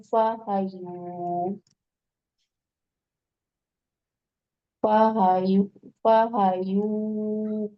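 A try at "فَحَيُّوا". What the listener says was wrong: Fahayyu tasdid ya-nya. Lebih teliti lagi bacaannya, hurufnya, harokatnya utama ya, tasdidnya tuh.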